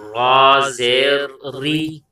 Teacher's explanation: تو را کے نیچے زیر ہے، تو را کو ہم باریک کر کے پڑھیں گے